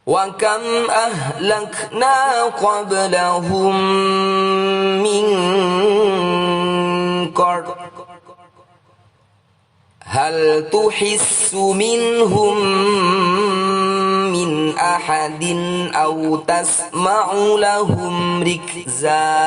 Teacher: Kita membaca fathah tanwin sebagai fathah panjang selama dua ketukan saja, tidak terlalu panjang. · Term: mad iwadh